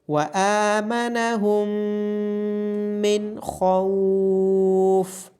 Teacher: میم کے اوپر تشدید ہونے کی وجہ سے میم پہ غنہ کیا جائے گا۔